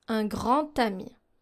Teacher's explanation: In un grand ami, here, since we don't have the D sound, in liaison, we use the T sound.